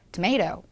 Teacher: 영어에서는 tomato 강세가 있는 중간에 A만 천천히 명확하게 발음을 해주고 나머지들은 굉장히 빠르게 흘러넘기면서 발음을 해줍니다